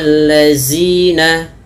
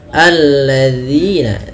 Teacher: sering terjadi kesalahan adalah dengan mengganti huruf dzalnya dengan huruf zai. Contoh, fabaddala allazina, zina harusnya alladzina, dzi ya, ujung lidah kita dza tempelkan dengan dua gigi sari kita, zina, alladzina, agar sempurna daripada makhraj huruf dzal.